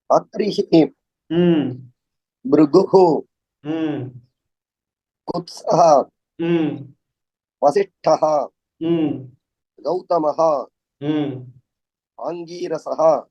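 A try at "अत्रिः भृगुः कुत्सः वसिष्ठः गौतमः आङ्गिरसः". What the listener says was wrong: Very good, very good. நல்லா வாசிச்சீங்க, first class.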